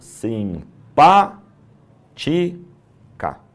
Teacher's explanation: Três sílabas. O mais forte é o pá. É proparoxétono. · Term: proparoxítona